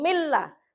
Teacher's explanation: nun sukunnya melebur, dianggap tidak ada